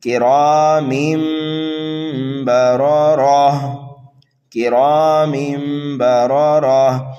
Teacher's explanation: ہم تنوین کو میم سے بدل کر کے پڑھیں گے